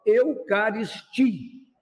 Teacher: se a letra I é a forte, a letra I é uma vogal tônica